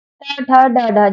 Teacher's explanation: जब आप ट वर्ग बोलेंगे तो आपकी जीवा ऊपर पलटेगी और एकदम से नीचे आके गिरेगी। जो जीवा ऊपर पलट के लगी वो वाला स्थान मूर्धन्य है।